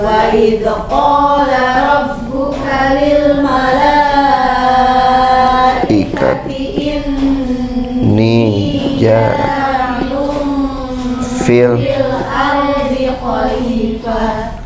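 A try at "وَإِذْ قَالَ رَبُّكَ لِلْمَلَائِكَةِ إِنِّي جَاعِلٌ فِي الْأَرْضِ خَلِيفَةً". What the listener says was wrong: Ada kha di sana? Oke. Khalifah, ulangi. Barusan tidak kuat tidak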